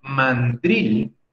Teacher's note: mandril tiene la sílaba fuerte en la última. Drill se debe pronunciar un poco más fuerte, porque no lleva tilde, un poco más fuerte que la sílaba man.